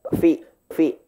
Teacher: fa itu bibirnya satu aja Pak ya. Bibir bawah ketemu dengan gigi atas. Fi. Bukan pi ya.